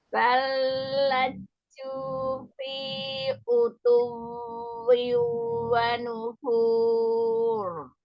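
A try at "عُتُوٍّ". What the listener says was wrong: Huruf ainnya buka lagi ya. Ya, waw yang tasdidnya dinabar. Utuwi wa nufur.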